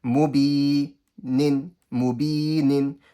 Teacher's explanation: So for example, mu, quick. Bi, the ba is stretched by the ya sakina. Bi, and they join. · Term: stretching rule